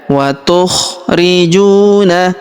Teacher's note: Huruf ju kita panjangkan dua harakat karena terdapat wau sukun di depannya. Huruf ri kita panjangkan dua harakat karena terdapat ya sukun depannya.